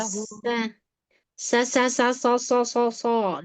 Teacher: Huruf sod ya. Huruf sod harus dikasih sofir.